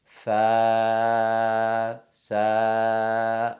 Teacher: with the vibration of the vocal cords, and the tongue in resting position, you open your mouth and you're pronouncing the alif